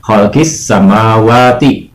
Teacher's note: alif lam samsiahnya tidak dibaca atau alif lamnya tidak dibaca